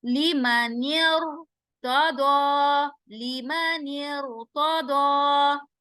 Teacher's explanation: रा साकिन होगा और उससे पहले वाले कलीमे के नीचे जेर आएगा, तो रा को हम क्या करेंगे, मोटा करेंगे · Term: कसरा मुफस्सल